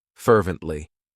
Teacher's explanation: It has 3 syllables, and the stress is on that first syllable